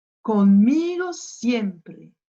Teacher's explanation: J'ai appuyé sur le i et j'ai appuyé sur la première syllabe ici, siempre.